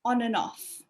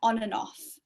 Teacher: we also get linking between and off, because and ends in a consonant and off begins with a vowel, so they link together. But actually with this, we also remove the D.